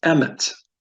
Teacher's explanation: has two segols back to back it's called the segulate so we'd pronounce a word like that always on the first syllable and not the last syllable